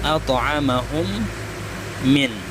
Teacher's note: Cara membacanya itu dimasukkan mim yang pertama ke dalam mim yang kedua. Maka ketika membacanya sikap mulut kita tertutup sampai huruf yang kedua, mim yang kedua, dan berdengung seperti ketika hukumnya idgham bi ghunnah, jadi direndam atau didengungkan. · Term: idgham mimi